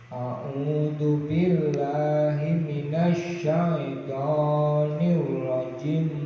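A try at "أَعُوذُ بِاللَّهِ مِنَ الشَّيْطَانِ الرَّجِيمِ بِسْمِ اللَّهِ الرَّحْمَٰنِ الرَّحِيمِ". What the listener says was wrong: Ya, jangan langsung jim. Nirrajimi bismillah. Jadi a'udzu billahi minasyaitonir rajim. Bismillahirrahmanirrahim. Nirrajim bismillah gitu.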